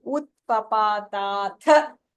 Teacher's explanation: So utpapata, all that are alpa pranaha. Only the tha there is mahapranaha.